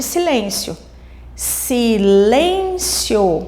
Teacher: a sílaba mais forte, que nós falamos com mais ênfase, está no lem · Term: sílaba tônica